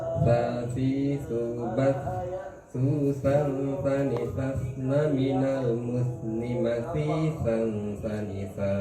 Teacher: terdengar dari sifat suaranya itu ujung lidah pasti menyentuh ujung gigi, ya. Lain suaranya kalau ujung lidah tidak berada di ujung gigi, gitu ya.